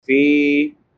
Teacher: فی فا کے بعد یا مدہ ہے، یا ساکن ما قبل کسرہ یعنی زیر ہے، اس کو ایک الف برابر لمبا کریں گے۔